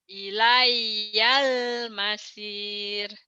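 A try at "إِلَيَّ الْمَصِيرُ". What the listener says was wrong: Sodnya masir, sod. Masir bukan masir, bukan S, tapi sod. Ilayal masir, masir. Monyongnya jangan dimonyongin, masir, masir, masir. Monyongnya monyong kecil kayak ikan, itu yang makan makanan ya. Ilayal masir.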